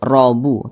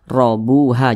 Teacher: robu tebal sehingga pangkal lidah kita itu ee keangkat ke atas robuha jangan Rabu tapi robu seperti itu kemudian Bu dibaca panjang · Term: dibaca tebal